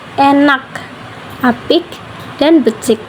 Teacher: bunyi ini dihasilkan ketika bagian belakang lidah menyentuh langit-langit lunak. Kemudian udara ditahan sesaat dan dilepaskan. Kita suara tidak bergetar sehingga disebut tak bersuara. · Pita suara tidak bergetar sehingga disebut tak bersuara. Pada dialek Tegal, bunyi K di akhir tetap diucapkan dengan jelas. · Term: velar tak bersuara